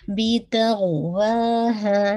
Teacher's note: बी की कसरा sharp रखिएगा, तो तौ को हैवी कीजिएगा